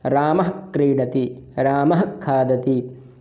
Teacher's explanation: आपकी जो जीभ है वह क्रीडति से पहले ही, का को अक्षर बोलने से पहले ही पीछे की ओर जाती है, विसर्ग पर ही। तो वहाँ विसर्ग जो होता है वह जिह्वामूल हो जाता है। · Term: जिह्वामूलीय